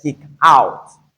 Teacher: when it comes to a combination in terms of phrasal verbs, we have the stress on the preposition rather than the verb